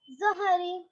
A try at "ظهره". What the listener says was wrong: جی ٹھیک شاباش